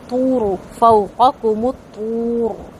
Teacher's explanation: قو بہت اچھے سے پر کرنا ہے، زبان اوپر تالو کی طرف مکمل طور پہ تالو کو کور کر لے گی